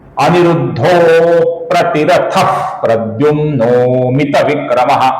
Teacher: अ प्रतिरथा में ती ह्रस्व है। इस विसर्ग का आगे प्रद्युम्ना का प आने के कारण हम हल्का सा फ अपूर्ण फ ऐसा उच्चारण करते हैं। प्रद्युम्न के विसर्ग का आगे अमित विक्रमा का अ आने के कारण ओ होता है।